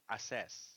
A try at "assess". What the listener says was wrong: not assess. Okay, so assess. The stress is in the second syllable, so assess.